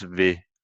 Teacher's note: very often the vowel e falls one step down to e, and the l we don't really have time for it. So the vil becomes ve.